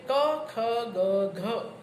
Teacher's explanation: ઉચ્ચારણ વખતે જીભનો પાછળનો ભાગ કોમળ પોચા તાળવાને સ્પર્શે ત્યારે જે નિષ્પન્ન થાય એ વ્યંજનોને કંઠ્ય વ્યંજનો કહેવામાં આવે છે.